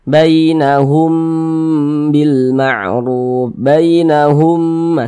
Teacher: dibaca dengan dengungan didengungkan jadi suaranya itu kita tahan kita panjangkan sejenak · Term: Ikhfa Syafawi